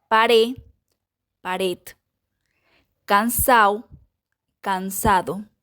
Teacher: también podemos encontrar una pérdida de la d final e intervocálica